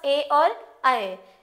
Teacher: इनका उच्चारण कंठ और तालु दोनों को मिलाकर किया जाता है। इसलिए इनको हम कंठ तालव्य कहते हैं।